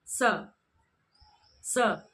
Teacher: तो यहाँ पर इसके उच्चारण को आप ध्यान दीजिए, स स। तो जब आप इसका उच्चारण करते हो स, तो आपकी जो जीभ है वह दांतों को स्पर्श करती हुई सी प्रतीत होती है। स ऊपर के दांतों को स्पर्श करती हुई सी प्रतीत होती है। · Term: दंतव्य स